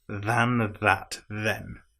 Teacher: In this case, all three of the th's are voiced